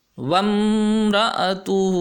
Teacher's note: یہاں پہ میم کی آواز ہم کلیئرلی نکالیں گے، یعنی واضح میم کی آواز ہوگی، اس میں کوئی غنہ وغیرہ نہیں ہوگا